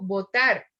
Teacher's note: cuando lleva un acento en la última yo digo votar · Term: sílaba tónica